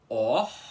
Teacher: Primeiro você tem que pronunciar esse O aspirado, um O com arzinho